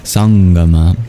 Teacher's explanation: the Anuswara becomes a guttural nasal